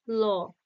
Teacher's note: পার্শ্বিক, যে উচ্চারণের সময় আহ শ্বাসবায়ু যেটা নির্গত হয় জিভের দুই পাশ দিয়ে বেরিয়ে আসে, ল।